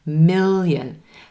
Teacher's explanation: do you hear that little y sound at the beginning of the second syllable